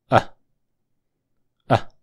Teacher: no tienes que abrir la boca y suena como Ah ah es el sonido más corto y más relajado del inglés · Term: sonido shua